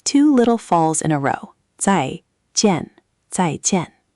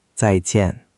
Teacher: Both syllables are 4th tone, so it's 2 little falls in a row.